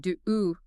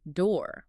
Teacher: one sound, flat. We're flattening the diphthong into a monophthong.